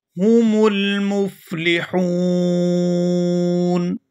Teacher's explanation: یہاں وقف کریں گے اور وقف کی صورت میں نون ساکن ہو جائے گا اور یہاں مد ہوگی اور ہم کھینچتے ہوئے یہاں پر وقف کریں گے